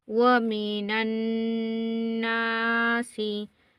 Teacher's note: नून के ऊपर तशदीद हो तो हमने गुन्ना करना है, नाक में हम थोड़ी देर आवाज़ को रोकेंगे, गुन्ना होगा।